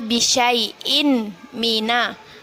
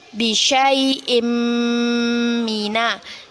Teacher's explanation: Kita baca dengan memasukkan bacaan tanwin kepada huruf mim. Awalnya bisyai'in mina menjadi bisyai'im mina. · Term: gunnah